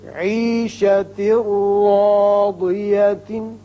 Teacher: یہاں تا کے نیچے 2 زیر تنوین ہے، بعد میں را ہے. یہاں ادغام بغیر غنہ ہوگا اور را پر زبر ہے، اس کو پر پڑیں گے.